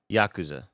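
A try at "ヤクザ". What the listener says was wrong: No, there's too much. You're putting too much of the second syllable. First syllable only.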